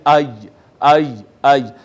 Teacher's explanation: یا کے لیے بھی زبان اوپر تالو کی جانب اٹھتی ہے، ساتھ ملتی نہیں ہے لیکن اٹھتی ضرور ہے تالو کی جانب، آئی آئی آئی۔